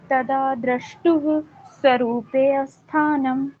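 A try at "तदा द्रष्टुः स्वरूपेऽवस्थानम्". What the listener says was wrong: स्वरूपे पे के बाद सीधा व पे आ गया आप। ठीक है, ए साइलेंट हो जाएगा फिर यहाँ पे। देखिए आप, अगर अगर अवस्थानम बोलेंगे फिर स्वरूपे नहीं आएगा, फिर स्वरूप आएगा। हाँ, ये अलग अलग हो जाएगा।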